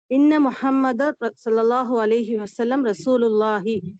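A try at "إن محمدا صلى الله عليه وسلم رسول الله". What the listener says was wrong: இன்னும் தெளிவாக நீங்க சொல்லுங்க. கடைசி முஹம்மதுட கடைசி ஹரக்கத்தை நல்லா வெளிப்படுத்தி சொல்லுங்க பாப்போம். نعم إن محمدا تاني.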